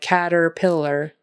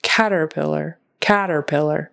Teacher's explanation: there's definitely more stress on that first syllable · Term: syllable stress